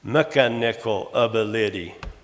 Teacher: All I did was remove that accent or stress from the second syllable and put on the first and third instead.